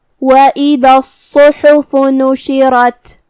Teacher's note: کلمت وَإِذَا میں الف کے نیچے زیر ہے تو ہم حمزہ کو نیچے سے ادا کریں گے. حمزہ کی ادائیگی حلق کے نیچے والے حصے سے ہے. دال کو زبان کے سر اور اوپر والے دانتوں کے اندرونی کناروں سے ادا کرنا ہے.